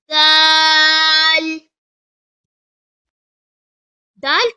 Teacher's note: dal comes from tip of the tongue that is the root of the front upper teeth